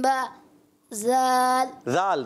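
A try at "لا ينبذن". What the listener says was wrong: जाल की अदायगी क्लियर करें। ला युम्बज़न, पीछे से मिलाते जाएं।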